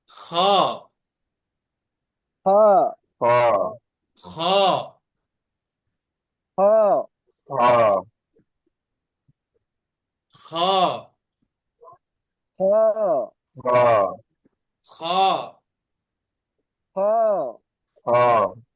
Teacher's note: এই খ হরফটা মোটা হয়, একালিপ টেনে পড়তে হবে।